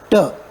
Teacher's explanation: Tip of the tongue है ना. वो किस पे जाके अटैच हो रहा है? एल्वोलियर रीजन पे अटैच हो रहा है.